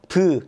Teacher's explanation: 브 하면 두 입술 붙었다 떨어지죠